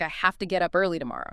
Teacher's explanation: Have to frequently becomes hafta.